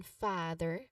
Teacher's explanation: a broad ah sound. Like in father, your jaw is totally hanging, your jaw is totally relaxed.